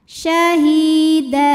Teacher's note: harakat Syahida jika berhenti di da hukumnya adalah Mad iwad sebab ada baris tanwin fathah yang kita wakafkan cara bacanya baris duanya jadi satu jadi fathah dan panjang dua harakat